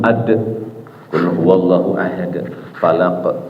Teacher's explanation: Sifat hurufnya mantul, ad, qul huwallahu ahad, falaq, pantulkan